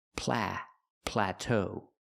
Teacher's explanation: We have to use a short a sound like black cat.